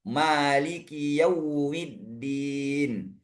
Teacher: riwayat Hafz harus dibaca panjang dua harakat. Nah, ditandai dengan alif kecil di atas itu.